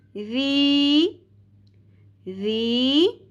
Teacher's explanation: زیر کو ہم نے ایک الف کے برابر کھینچنا ہے حرف مدہ یا کی وجہ سے